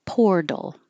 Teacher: The T changes to a D.